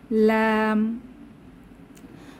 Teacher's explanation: জিহবার আগার কিনারা সামনের উপরের দাঁতের মাড়ির সঙ্গে লাগিয়ে লাম উচ্চারিত হয়